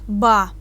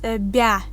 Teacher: When we write B and after that we write A, we get ba. B is hard, and if we write B and after the B we write ya, it's bya. It's b is soft